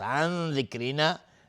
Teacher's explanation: عن ذکرنا نون ساکن بعد ذال اخفای حقیقی